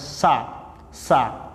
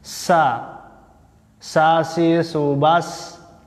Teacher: ketika pengucapan huruf sin, nafasnya berhembus, hamas